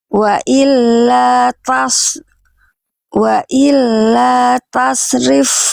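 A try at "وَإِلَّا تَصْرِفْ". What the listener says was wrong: Tebalkan lagi. Yang ini kurang tebal. Suaranya yang awal bagus. Yang ini kurang tebal.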